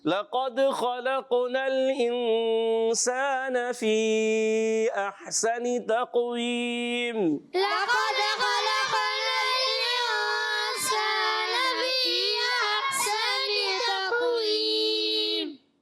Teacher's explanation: انسان میں اخفا کا غنہ ہوگا